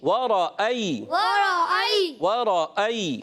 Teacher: یا ساکن سے پہلے زبر آ جائے, یالین ہوتا ہے, نرمی سے پڑھیں گے, سختی سے نہیں پڑھیں گے